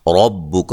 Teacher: را کو موٹا ادا کریں گے، کاف کو باریک پڑھیں گے